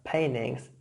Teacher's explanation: elision of the alveolar plosive t, since it follows the alveolar nasal and it is in a non-prominent position.